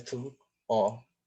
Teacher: um fenômeno chamado de vogal eco, em que a primeira vogal ela é realizada também na segunda sílaba